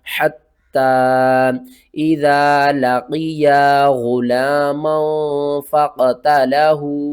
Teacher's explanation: اس مد کا نام ہے مد منفصل، اس کو ہم نے 3 الف کے برابر کھینچنا ہے